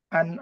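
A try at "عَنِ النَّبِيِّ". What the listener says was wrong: nah, anin, bukan an. Disambung aja. Anin nabiyyi.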